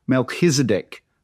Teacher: So it's got a guttural, you've got to sort of clear your throat sound to it.